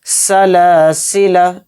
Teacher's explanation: यहां पर हम लाम को नहीं खींचें लाम को जल्दी पढ़ेंगे सलसला इस तरह से यानी जिस तरह से लिखा हुआ है